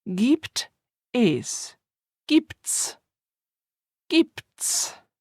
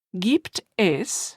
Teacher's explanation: notice how Gibt which ends with a consonant and es, which starts with a vowel can become joined together